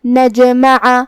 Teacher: کلمت نجمع میں یہاں جیم پہ جزم ہے، تو جو کہ جیم حروف القلقلہ میں سے ہے تو ہمیں یہ حرف کو ہلاتے ہوئے یہ کلمہ کو پڑھنا ہے · عین کی ادائیگی حلق کے درمیان والے حصے سے ہے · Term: حرف العین